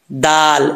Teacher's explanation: जुबान की नोक ऊपर वाले दांतों की जड़ों से लगे तो दाल पढ़ा जाता है दाल इसको बाज लोग इसको पुर पढ़ देते हैं मोटा ऐसा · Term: दाल का मखरज